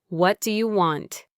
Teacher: The T in what changes to a D sound, and do you gets compressed into dia.